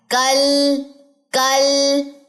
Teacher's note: کاف ادا ہوتا ہے زبان کی جڑ یعنی کہ اقصی لسان جو ہے جب یہ نرم اور سخت دونوں تالو سے لگتا ہے